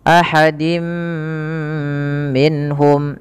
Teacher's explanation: tanwinnya dimasukkan ke huruf mim dan ditahan. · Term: idgham bi gunnah